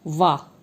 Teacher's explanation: इसके बाद दंतोष्ठ, जिनका उच्चारण निचले होठ के साथ दांतों के मिलने से होता है वो दंतोष्ठ कहा जाता है। जैसे वाह, इसमें आपके ऊपर के दांत जो है वो नीचे के होठ से टकराते हैं